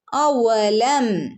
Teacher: വാവിനെ പ്രത്യേകം ശ്രദ്ധിക്കണേ ചുണ്ട് കൂർപ്പിച്ചു പറയണം ട്ടോ അവ്വലം മീമിനെ ഇവിടെ വ്യക്തമാക്കി ഓതുക അവ്വലം യറൗ യറൗ യറൗ അന്ന ഇവിടെ